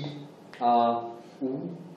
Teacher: Si je vous dis i, a, ou, ce sont des marques du prolongement. Mais lorsque vous entendez bien, en fait, je suis obligé de sortir un son avant. C'est le son de la hamza.